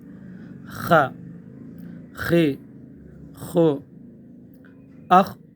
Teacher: اح اح اح، خ یہ حروف مستعلیہ میں سے نہیں، حرف موٹا ادا ہوتا ہے، پر کر کے اس کو ادا کیا جاتا ہے۔ خ، گلے کے بالکل اوپر سے خرخرا غرغرا خرخرا کی آواز آئے گی۔ خی خو، اخ، اس کو بھی قلقلہ نہیں کرنا ہے، اخ اس طرح نہیں کرنا، اخ آواز کو روکنا ہے۔